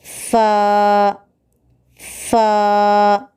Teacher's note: اوپر کے دانتوں کو نیچے کے ہونٹ کے تر حصے کو لگانے سے فا نکلتا ہے